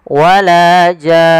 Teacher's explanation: panjangkan dulu jannya 6 harakat, kemudian masukkan nun dan ditahan baru dimatikan nunnya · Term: mad lazim kalimi mukhaffaf